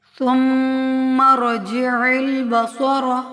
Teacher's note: میم مشدد کو ہمیشہ غنہ سے ادا کیا جاتا ہے، یعنی اس کی آواز کو بھی ناک میں ٹھہرایا جاتا ہے، غنہ کیا جاتا ہے جو ظاہری غنہ ہوتا ہے۔